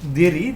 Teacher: দেরির দ হচ্ছে ঘোষ অল্পপ্রাণ ধ্বনি